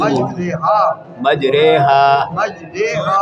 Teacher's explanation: یہ ایک ہی لفظ ہے جس کو رے پڑھنا ہے، ری نہیں پڑھنا ہے